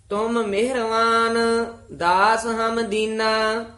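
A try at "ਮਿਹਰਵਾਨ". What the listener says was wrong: मेहरवान ला ला के नहीं बोलना मेहरवान सियारी बोलनी है मेहरवान छेती बोलना तुम मेहरवान दास हम दीना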